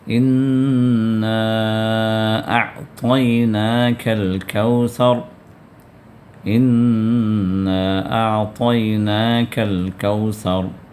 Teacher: الکوثر میں سا جو ہے اس سا کو زبان کو باہر نکال کر ادا کیجیے